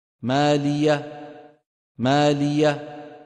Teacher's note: أبرز الأخطاء عند نطق حرف العين، نطقها بصوت عائم أشبه بالألف المفخمة